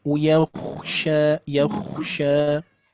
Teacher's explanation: Coba khnya agak tebal sedikit, Bu.